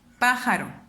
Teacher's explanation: ¿Dónde se eleva más mi voz al pronunciar la palabra pájaro? Pájaro. Me doy cuenta que es en el pa. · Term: palabra esdrújula